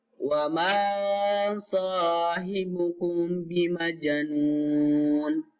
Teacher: ikhfa safawi adalah mim sukun bertemu dengan ba, bacaan atau dibaca dengan dengung 2 harokat.